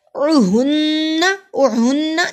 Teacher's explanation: نون پہ غنہ ہوا، نون پہ شد ہے